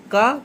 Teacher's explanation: अल्पप्राण, अघोष, स्पर्शी और कंठ ध्वनि